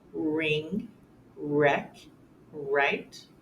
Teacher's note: WR words where you only hear the r sound